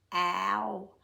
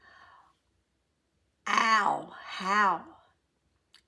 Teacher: O-W is ah, the ugly A sound at the beginning, and then it goes to O. Ow. It's not ow, although in England it probably is ow.